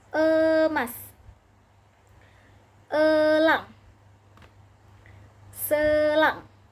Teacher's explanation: E dengan madya atas tengah dengan kondisi mulut semi tertutup menghasilkan bunyi emas, elang, selang, gitu.